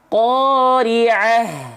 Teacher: Kalau berhenti maka dibaca tidak menjadi ta, karena stop. Kalau stop menjadi huruf H besar. Qari'ah. Tuh gitu jadinya, bukan qari'at. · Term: ta marbutoh